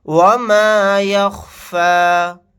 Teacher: آیت کرنے کی صورت میں اس طرح سے پڑھیں گے وَمَا يَخْفَى، یا نہیں پڑھا جائے گا لاسٹ میں.